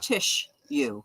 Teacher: we pronounce as if the second s is an H